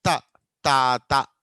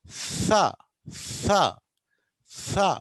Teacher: కానీ ఇంగ్లీష్లో తా అన్నప్పుడు నాలుక కొద్దిగా బయటికి వస్తుంది, అంటే రెండు పళ్ళకి మధ్యలో కొంత గ్యాప్ అనేది ఏర్పడుతుంది.